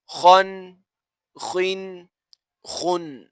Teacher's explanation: خا حروف مستعلیہ میں سے ہے لہٰذا آپ خا کو پر کر کے پڑھیں